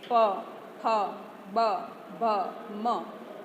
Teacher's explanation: તો એ આપણા બંને હોઠ ભેગા થાય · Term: ઓષ્ઠ્ય